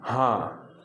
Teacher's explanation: अनुस्वार में केवल नाक से ध्वनि निकलती है, बिंदी में जब आएगा, जैसे जब आप कंबल बोलेंगे ना, तो जो बीच में जो बिंदी का आपने उच्चारण किया सिर्फ नाक वो वाला। लेकिन अनुनासिक में क्या होगा, मुंह और नाक दोनों से ध्वनि निकलती है। जैसे जब आप बोलेंगे हाँ, तो हाँ में आप देख रहे हैं कि केवल नाक से नहीं ध्वनि निकल रही है, मुख से भी निकल रही है।